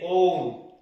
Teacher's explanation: ठीक है, मात्रा में देखें तो त्रिमात्रिक होता है। ठीक है, मात्रा में त्रिमात्रिक, दीर्घ से भी ज्यादा समय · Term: प्लुत स्वर